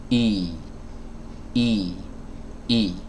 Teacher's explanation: Jadi kalau rahang bawahnya diturunkan sedikit, itu insya Allah kasrohnya menjadi sempurna. Ya, dan huruf hamzah ini adalah huruf yang dikeluarkan dari tenggorokan bagian bawah, ya, dari pita suara